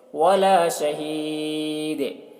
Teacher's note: وَلَا شَهِيدٌ، یہاں پر تنوین جو ہے یہ سکون سے بدل جائے گا، تو دال میں قلقلہ کریں گے کیونکہ دال حروف قلقلہ میں سے ہے